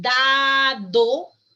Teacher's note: es un sonido oclusivo dental sonoro